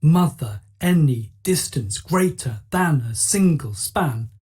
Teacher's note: The stressed first syllables, mother, any, distance, greater, than, a single, span. These are trochaic, a stressed followed by an unstressed syllable.